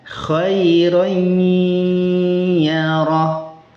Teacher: Idghamnya naqis. Jadi, gunahnya masih dibaca dan di atas ya tidak ada tasydid. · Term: idgham naqis